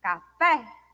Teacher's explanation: Assim, nós temos sílaba tônica, oxítonas, a sílaba mais forte, a que se é falada com maior intensidade, seria a última sílaba, como café. Café, o fé é mais forte, né? Ela é pronunciada com maior intensidade.